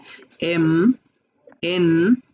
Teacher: So এম এবং এন এ দেখো একটা নাকের প্রভাব রয়েছে।